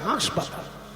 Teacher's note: পশ্চিমবঙ্গের লোকেরা বেশি বেশি চন্দ্রবিন্দু প্রয়োগ করে তার উদাহরণ পশ্চিমবঙ্গের লোকেরা হাসপাতালকে বলে হাঁসপাতাল চন্দ্রবিন্দু দিয়ে দেয়